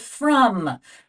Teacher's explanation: in the word from the O is making the sound uh as if it were a u it's not making a regular o sound so we know the